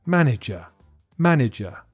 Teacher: listen to the middle syllable because it sounds like a weak e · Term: weak I